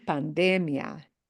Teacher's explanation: this does not have the ia punch. And that means the syllable that we punch harder is that de syllable. · But when you read that and you see no accent mark on that I of the IA, it means we punch the de, the second to the end syllable harder